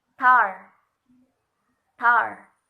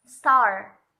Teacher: Ketika kita melafalkan kata tar, otomatis seperti ada ledakan yang keluar dari mulut kita. Tar. Itu bisa dibuktikan dengan kita meletakkan tangan di depan mulut kita seperti ini. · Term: aspirated